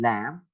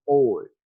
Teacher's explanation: ल sound लैम्प में आपको ये फ्रंट पर नजर आ रहा है, जबकि ओल्ड एंड टेबल आपको बैक पे ये प्रोनाउंस होता हुआ दिखाई दे रहा है. तो occurring before consonants and at the end of the words, they are incomplete complementary distribution. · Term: clear L